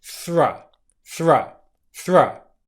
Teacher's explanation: The technically correct pronunciation of thra is with your tongue going out in between your teeth.